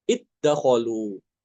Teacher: dalnya dimasukkan ke dal, iddakhalu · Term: idgham